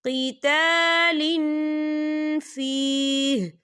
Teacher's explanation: तनवीन की आवाज़ को नाक में छुपाएंगे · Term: इक्फ़ा